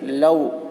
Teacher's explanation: واو ساکن سے پہلے زبر ہے، واولین ہوا، اس لیے واولین کو نرم آواز کے ساتھ جلد پڑھیں، معروف پڑھیں، مجہول آواز سے بچیں.